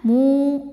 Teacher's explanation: ada wau sukun didahului harakat damah cara bacanya mu mimnya panjang dua harakat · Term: Mad Thobi'i